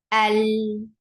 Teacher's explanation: जब लाम को बोला जाता है, तो कोई फ्लो ऑफ ब्रेथ नहीं होगी। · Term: जहर